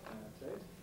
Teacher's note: this is a very weak O, which easily goes to U